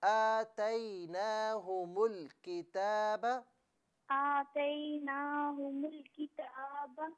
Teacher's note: حمزہ پر کھڑا زبر تھا، اسے کھینچنا چاہیے تھا